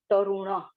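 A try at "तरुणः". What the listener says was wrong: Tarunaha. Don't drop the visarga.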